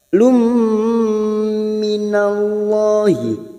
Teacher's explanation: Nun sukun atau tanwin yang bertemu dengan 4 huruf ini maka siap masuk dan mendengung, masuk ke huruf depannya yaitu huruf mim. Lum, dan ditahan selama 3 harakat. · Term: idgham biguna